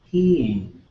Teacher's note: Southern has 4 tones, and the difference being the long high tone goes up and back down